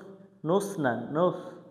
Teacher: সা অক্ষর জিহ্বার আগা থেকে নরম করে পড়তে হয়